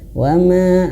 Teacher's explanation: mat tabi'inya jangan sampai lebih daripada 2 harokat. Mat tabi'i ingat satu ayun saja.